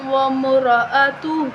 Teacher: میم کے اوپر تشدید ہے، میم مشدد ہے تو ہم اس پر غنہ کریں گے